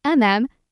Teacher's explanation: The third tone dips down low and then comes back up.